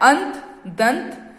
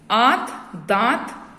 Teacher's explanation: अंत, दंत, बोलते समय न की ध्वनि ए और दा के बाद है। यदि आप कहें आंत, दांत, तो अनुनासिक ध्वनि आ, हा के साथ सुनाई देती है।